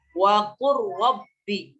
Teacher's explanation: Nah, tidak dibaca wa qul rabbi, tidak. Tapi dimasukkan ke ra.